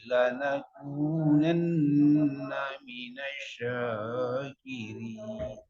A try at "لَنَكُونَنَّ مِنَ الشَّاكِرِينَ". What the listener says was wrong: Kurang bertasydid shinnya. Ulang dari lanakunanna.